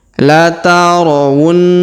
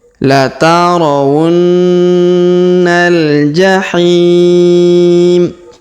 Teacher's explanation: La tarawunna, huruf na kita tahan dan tekan, lalu kita dengungkan 2-3 harokat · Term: huruf dengung